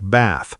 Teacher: a flatter a sound like bath with a short a. British speakers, especially in southern England, use a longer a sound.